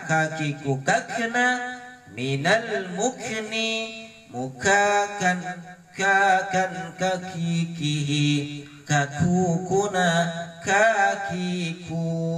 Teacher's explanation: kaf mati dibaca bersih